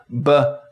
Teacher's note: processes we define ba as a pulmonic aggressive voiced bilabial plosive so the air is coming out of our lungs our vocal cords are vibrating we close our lips allowing pressure to build up and then release it with a popping sound